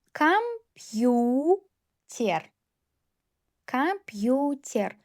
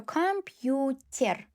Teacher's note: Yu read as two sounds after soft sign. Ter. T very soft because after because t before ye.